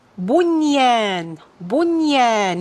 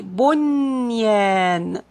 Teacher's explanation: The fourth and the last word is bunyan, bunyan. Here the noon also is not going to be merged into the ya. So it's going to be pronounced clearly. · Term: izhar